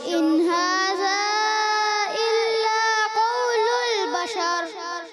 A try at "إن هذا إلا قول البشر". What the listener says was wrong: تھوڑا مد کو اور لمبا کر لیں. إن هذا إلا قول البشر.